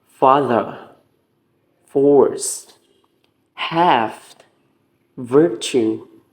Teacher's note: And this process causes friction, and by this friction causes some vibration in order for some words to sound like T and V. The air is forced to pass through the lower lip and upper teeth. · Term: fricatives